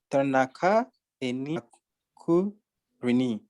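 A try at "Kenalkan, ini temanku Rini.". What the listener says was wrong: Kenalkan. Can you say kenalkan? Not kenalka, but kenalkan. Kenalkan.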